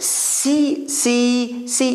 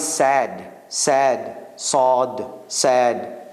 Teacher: you can hear the hiss but when you say the guy is sad sad sod said there's not that much hissing sound in it